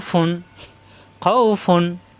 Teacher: উপরে দুই দাতের আগা নিচে ঠোটের পেটে লাগবে